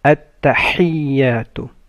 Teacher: ح comes from mid of the throat